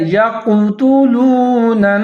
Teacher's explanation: آگے ہے وَيَقْتُلُونَ النَّبِيِّينَ، یا زبر کے بعد قاف ساکن ہے، قاف کو آپ نے موٹا کر کے پڑھنا ہے